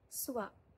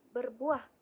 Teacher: Apabila kita menyebut perkataan suab, seolah-olah kita menambahkan huruf W di tengah-tengah vokal U dan juga vokal A tersebut. Sama juga dengan berbuah terdiri daripada vokal U dan juga vokal A. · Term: Vokal rangkap